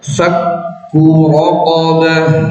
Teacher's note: Jadi awal nempelnya kuat, fak syiddah kuat. Tapi pas bunyi ka lembut. Jadi campur.